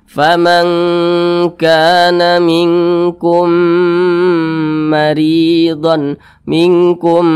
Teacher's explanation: cara baca nya itu diidgamkan kemudian diengungkan Nah kita panjangkan sebentar suaranya faman kaana minkum maridon minkum Mari